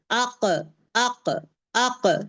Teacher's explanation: जब ये बाउंस होगा नीचे नीचे से ड्रॉप होगा। ये जबान नीचे ड्रॉप होगा ना तो इमीडिएटली आवाज बाहर को आ जाएगी। अक अक अक जबान को नीचे करें। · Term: बाउंसिंग वे